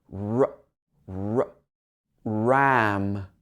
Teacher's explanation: So your tongue is in the middle of your mouth. It's bunched up there. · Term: r sound